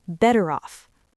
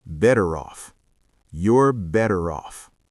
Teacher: In American English, those T sounds in better turn into soft D sounds, like a quick flap of the tongue, better. And the R in better links directly into the O in off,